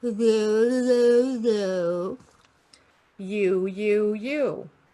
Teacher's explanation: lip round slightly for the O and more for the U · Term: lip rounding